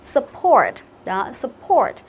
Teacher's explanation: Không phải là sắp như kiểu sắp xảy ra đâu mà là sờ. Âm Ơ ấy nhớ chưa?